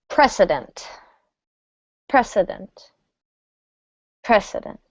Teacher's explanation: And the last one, precedent, precedent, precedent. Make sure this is a s sound, otherwise it will sound like the word president. We don't want that.